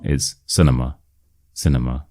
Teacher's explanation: the stress is on the sin and then we have nma.